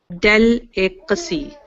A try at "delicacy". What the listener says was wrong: Close. You're kind of going back to the way you were saying it before. It is 4 syllables. Delicacy. Delicacy. So remember the 4 syllables.